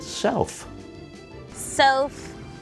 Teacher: what she was doing there was putting her top teeth on her bottom lip and blowing air